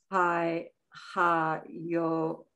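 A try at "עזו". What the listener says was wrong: No, it's a Zion. Z. It's a Zion.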